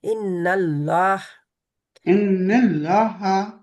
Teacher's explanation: इन्नल्लाह, लाम अल्लाह का जो होता है उनको मोटा उसको करते हैं। क्यों? क्योंकि जब ला अल्लाह के नाम से पहले जबर आ जाए किसी लफ्ज पर, हरफ पर, जा जेर आ जाए, तो फिर अल्लाह, सॉरी, जबर आ जाए, जा पेश आ जाए तो मोटा पड़ा जाएगा।